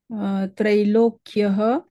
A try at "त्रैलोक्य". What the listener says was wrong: त्रैलोक्यः नास्ति तत्र,